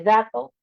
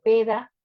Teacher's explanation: No está haciendo un adecuado sello velar, hay un error con el punto articulatorio, con la forma en la que está saliendo el aire.